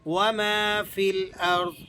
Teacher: یہ میم کے بعد الف ہے تو آپ نے اس میم کو کھینچ کر ادا کرنا ہے